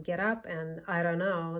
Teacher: the flap T sound and the flap D sound while we're at it because they are the same sound just the letter is different